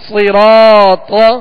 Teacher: صاد بھی پر پڑھیں گے، حروف مستعلیہ میں سے را پر زبر ہے، را کو پر پڑھیں گے، را کے ساتھ الف مدہ ہے، ایک الف کی مقدار، اسے کھینچ کر ادا کریں گے. طا حروف مستعلیہ میں سے ہے، اسے بھی پر پڑھنا ہے.